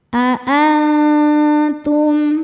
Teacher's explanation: Cara bacanya nun disamarkan menuju ta disertai bunyi dengung. Nah, dengungnya sedikit karena ta makhrajnya dekat dengan nun. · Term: ikhfa hakiki aqrab, ikhfa hakiki